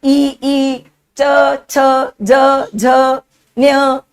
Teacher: जीभा side से तालू को टच कर रही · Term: तालव्य